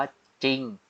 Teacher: ตัวควบเนี่ยตัวที่2เป็นรอเรือแต่จะไม่ออกเสียงรอเรือเลย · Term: ควบไม่แท้